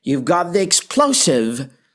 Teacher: Identical in form to a statement except for the final rising question intonation.